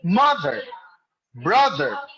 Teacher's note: the stress for mother and brother falls on the first syllable